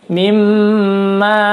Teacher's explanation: Fa'akhrajahuma di sini baca panjang matabi'i mimma mim tasdid. Hukumnya adalah gunnah mim atau mim gunnah. Bacanya tahan perketukan.